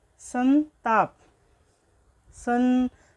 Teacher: सन बोलेंगे तो आपके नाक से ध्वनि आएगी, तो जो ये बिंदु है इसका जो प्रयोग होता है ये संताप, तो आपके नाक से इसकी ध्वनि आएगी। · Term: अनुस्वार